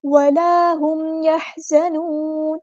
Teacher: ہاں کو مستحلق یعنی مڈل تھروٹ سے ادا کرنا ہے ، زا کو سختی سے ادا کرنا ہے، یحزنون، زا میں